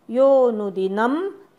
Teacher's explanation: यो नंतर अवग्रह आहे तिथे एक मात्रा स्वर लांबायचा